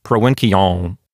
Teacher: the ancient Romans pronounced it with kind of a nasalized sound, like provinciam.